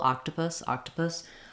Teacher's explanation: put no vowel here for this last syllable octopus octopus um there is a little bit of a schwa uh sound in there but we're moving very quickly